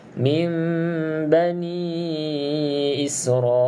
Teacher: tutup rapat bibir atas dan juga bibir bawah dengan kadar 2 harakat dengung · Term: iklab